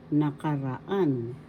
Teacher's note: the fourth syllable has the accent so you pronounce it nakaraan that means fast nakaraan That means